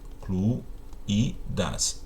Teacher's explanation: Na letra C, a palavra incluídas tem acento porque o I tônico forma hiato com a vogal anterior